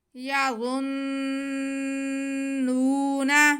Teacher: ہم وا کو نرمی سے پڑھیں گے، سیٹی کی آواز نہیں آئے گی، لیکن اسے موٹا کر کے پڑھیں گے۔ یا غن، اب وا پہ پیش ہے اور آگے نون مشدد ہے، تو وا کا پیش ہم نون مشدد کے ساتھ ملا لیں گے۔